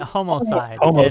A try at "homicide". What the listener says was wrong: You keep saying homo a few times.